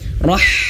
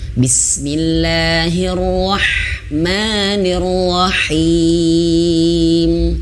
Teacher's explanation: huruf h-nya mengeluarkan angin yang banyak dan kecil tipis